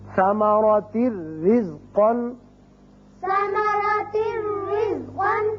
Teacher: را تنوین کی وجہ سے ایک زیر پڑی جائے گی اور صرف را ہوگا، یہاں نون کی آواز نہیں آئے گی